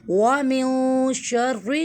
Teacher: next last آیت وَمِن شَرِّ، نون ساکن کے بعد شین آ رہا ہے، اکفا ہوگا